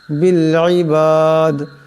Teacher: ওয়াল্লাহু বাসীরুম এমন করে। বিল ইবাদ, এখানে দম সারলেই দাল সাকিন হয়ে যাবে, কলকলা হবে, দাল কলকলার হরফ।